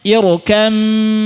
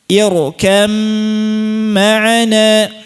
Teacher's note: Hilangnya sempurna, sifat ba nya hilang seluruhnya. Tidak ada bunyi ba sama sekali. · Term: kamil